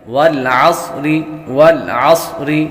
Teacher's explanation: صاد حروف صفیریہ یعنی سیٹی والے حروف میں سے بھی ہے تو سیٹی کی آواز بھی آئے گی